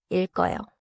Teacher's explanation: 일배 받침은 리을 기역, 즉 리을 기역 겹받침이에요. 읽어요에서는 리을 소리가 앞 음절에 남고 기역 소리가 어로 이어져요.